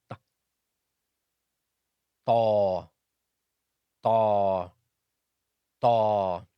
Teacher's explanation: Ta is pronounced when the top part of the tip of the tongue, when it hits the roots of the upper incisors.